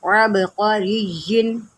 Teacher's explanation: قاف جو ہے حروف مستعلیہ میں سے ہے، اس کو موٹا کر کے پڑھیں